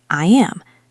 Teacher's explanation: Hear that little yes sound? My tongue is high and flat for the word I, and as I move to the am sound, it creates that y bridge. Listen closely.